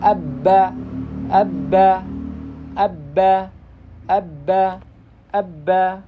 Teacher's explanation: jadi kerasa ada angin yang keluar karena ditahan sebentar · bertemunya antara kedua bibir dalam keadaan tertutup yaitu huruf ba